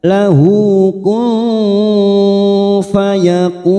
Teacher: nun sukun bertemu fa, ikhfa ausat atau ikhfa hakiki, kita samarkan bunyi nun sukun 3 harokat